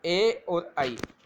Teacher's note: ए और आई ये दोनों स्वरों का उच्चारण स्थान कंठ और तालु है। कंठ और तालु ये दोनों को मिश्रण भाग से बोले जाते हैं। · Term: कंठ तालु